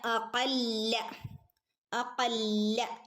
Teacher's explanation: ലാമിൻ്റെ മുകളിൽ ശ്രദ്ധയുണ്ട് ഒന്ന് കനപ്പിച്ചു കൊടുക്കുക